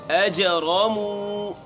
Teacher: جیم میں قلقلہ کرنا ہے، حروف قلقلہ میں شامل ہے اور اس کے اوپر جزم بھی ہے، تو یہاں ہم جیم کو حرکت دیں گے۔